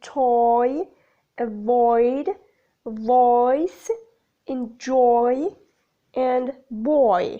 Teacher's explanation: Characteristics of /ɔɪ/: the glide begins in the position for long /ɔ:/ as /ɔɪ/ moving up and forward towards /ɪ/. The lips start open and rounded and change to neutral. · The tongue movement extends from back to centralized front position. The lips are open rounded for the first element then change into neutral for the second. Characteristics of /ɔɪ/: the glide begins in the position for long /ɔ:/ as /ɔɪ/ moving up and forward towards /ɪ/. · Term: gliding vowel /ɔɪ/